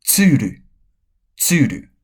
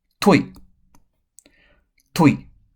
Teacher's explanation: Ta, te, ti, to, tsu. So, only ti and tsu need the sibilant sounds. Rest do not.